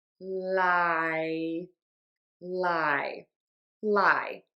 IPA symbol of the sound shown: laɪ